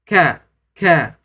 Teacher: Huruf kaf ya. Langit-langit pangkal lidah kita bertemu dengan langit-langit keras.